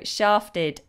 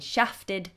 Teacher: Shaft, long vowel, and American is short vowel. So shafted if you're British English and shafted if you're American English.